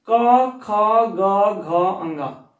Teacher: ऐसे वर्ण जो हमारे गले के यानी कंठ की मदद से बोले जाते हैं, उन्हें हम कंठ कहते हैं।